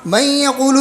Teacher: من یقول میں نون کے اندر جو صفت غنہ ہے وہ باقی ہے، نون کے اندر جو صفت غنہ ہے وہ باقی ہے. نون کا یا میں ادغام ہوا ہے، لیکن اس صورت میں ہوا ہے کہ اس میں غنہ باقی ہے، مکمل ادغام نہیں ہوا ہے. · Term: ادغام ناقص